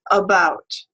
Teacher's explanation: it is a mid-central unrounded vowel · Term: schwa